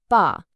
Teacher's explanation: For the B sound in ba, there's no puff. Hold your hand right in front of your mouth and say it.